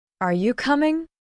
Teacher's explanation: Your voice rises at the end. That rising tone signals a question.